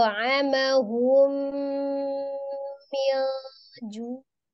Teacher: ju' itu dipanjangkan, ada waw sukun sebelumnya dhamma di huruf jimnya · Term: matobi'i